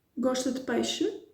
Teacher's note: you may have something like an affirmative sentence with an intonation of a question at the end